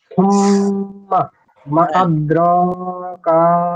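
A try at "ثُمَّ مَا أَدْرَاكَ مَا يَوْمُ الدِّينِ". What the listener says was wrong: হ্যাঁ, এই যে মা একটু টান দিবেন বেশি, মা আদরাকা বলেন তো। না মা টান হবে না।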